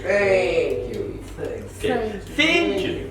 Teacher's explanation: we get tongue out and we catch our tongue between our upper and bottom teeth okay and then we push the air out